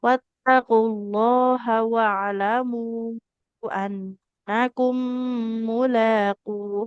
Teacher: annakum nunnya nggak boleh panjang ya. Tidak annakum karena dia fathah tidak bertemu dengan alif.